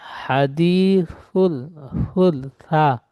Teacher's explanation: জিহ্বার আগার সামনে দাঁতে হালকা ভাবে ঠেকে।